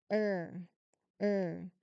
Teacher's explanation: It's a long stressed vowel sound often called the R-colored vowel. Here, the letters U and R in the spelling represented by one unique IPA symbol, the two dots meaning it's a long sound.